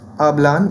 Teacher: they speak will be pronounced as hablan with the stress placed clearly on the penultimate syllable